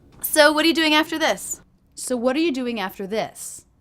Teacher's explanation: I'm dramatically reducing the word our to the schwa